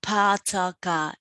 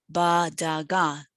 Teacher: we don't produce aspiration. So instead of saying tin, we say bin. Right, so the pa ta ka is in a way realized as the ba da ga